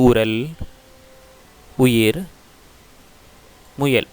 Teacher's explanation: இந்த 3 சொற்களிலும் உகரம் இதழ் குவித்து உச்சரிக்கப்படுகிறது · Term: முற்றியலுகரம்